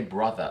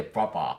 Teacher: But Londoners don't do TH at all.